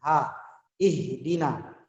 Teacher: ha di situ adalah ha di pangkal tenggorokan. Jadi dibacanya di pangkal tenggorokan ha.